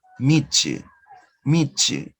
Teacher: The consonant ta plus the consonant ya. So we're going to have these two sounds. Notice ta and ya. And you produce a third sound, the consonant ch.